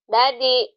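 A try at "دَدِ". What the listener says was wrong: Dadi. Bukan badi ya, dadi.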